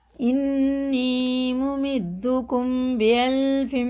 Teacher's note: میم ساکن کے بعد با آئے تو غنہ کے ساتھ اخفا ہوگا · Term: اخفا شفی